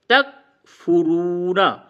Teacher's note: واو کو تھوڑا سا کھینچیں گے، واو مدہ ہے